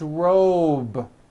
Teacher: It's not rope with an unvoiced P. It's robe. Okay? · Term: voiced B ending